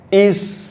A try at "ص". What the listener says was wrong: Nah, masih tipis. Ils. Ils, jangan is. Ils. Ils.